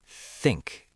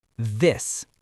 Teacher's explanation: In think, TH is unvoiced. In this, it's voiced.